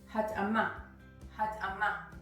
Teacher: I am emphasizing the last syllable in the word hat'ama. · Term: syllable emphasizing